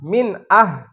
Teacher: যেহেতু হামজা ইজহার হরফ তাহলে এখানে গুন্নাহ হবে না